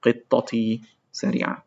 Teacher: But here when we have the possessive plus the noun, so if the noun ends with تاء مربوطة قطة, the تاء مربوطة becomes an actual تاء at the end of the word before the possessive pronoun